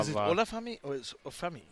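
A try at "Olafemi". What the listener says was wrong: Oh, you have to pronounce O. It's not silent. Olafami.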